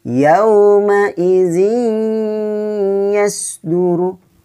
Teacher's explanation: maka hukum bacaannya idgham bigunnah, dimasukkan dengan dengung.